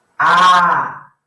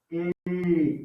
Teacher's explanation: Do som mais aberto para o som mais fechado.